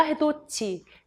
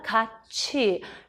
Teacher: 종속적 관계를 가진 이 나이가 올 적에는 디귿, 티읕이 지읒, 치읓으로 발음이 나요